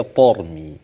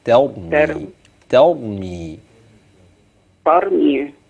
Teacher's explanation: اخلي بالي التاء في ترمي ترقق والراء بعدها تفق خم عشان ما يجيش افخم الراء افخم التاء